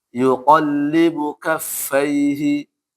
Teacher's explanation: ya sebelumnya fathah dibaca i ya. dia agak-agak mirip-mirip ke E ya